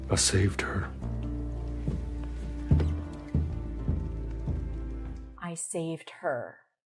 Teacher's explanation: and her is stressed as saved is I saved her. Okay, so we see how even function words are stressed when we want to emphasize the pronoun